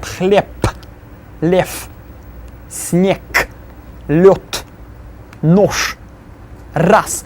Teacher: they will become their voiceless counterparts at the end of words